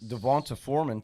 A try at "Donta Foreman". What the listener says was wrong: Donta Foreman. It's not, it's not Devonta. There's no V in there. Yeah, you V'd it